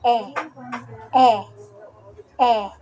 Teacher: Pag sinabing E, ang posisyon ng ating dila ay nasa gitna at ang bahagi ng ating dila ay nasa harap.